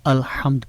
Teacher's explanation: الحمد میں حرف ہا جو ہے، اس کا جو اخراج ہے، آواز کا جو اخراج ہے، یعنی حرف ہا کی آواز ہمارے حلق کے درمیان سے نکل رہی ہے